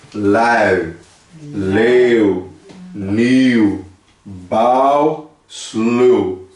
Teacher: E soa como encontro vocálico mais o som de U brasileiro